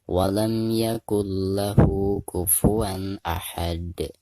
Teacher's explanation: Jadi termasuk qalqalah kubro. Jadi cara memantulkan dalnya itu harus lebih besar atau harus lebih jelas ya.